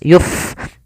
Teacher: fa yang dia sukun, memiliki sifat hamas, maka dibaca dengan mengalirkan nafas. Yuf, jangan yup dengan pa.